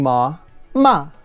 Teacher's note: falling ma ma which is to scold